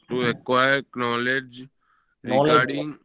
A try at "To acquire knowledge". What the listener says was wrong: knowledge. K is silent.